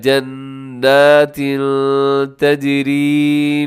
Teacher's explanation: تنوین کے بعد جب حرف تا آ جائے تو وہاں پر اخفا کرتے ہیں، آواز کو ناک میں لے کے جاتے ہیں